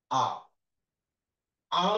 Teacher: আর হচ্ছে কি, এটা কিন্তু তোমার আহ এটা মধ্যপন্থা অবলম্বন করছে, এই সামনে যাচ্ছে না পিছনে যাচ্ছে না, তুমি খেয়াল করে দেখো। আ উচ্চারণ করার সময় জিভ কি সামনেও যাচ্ছে না পিছনে যাচ্ছে না, এই জন্য এটাকে বলা হচ্ছে তোমার মধ্য।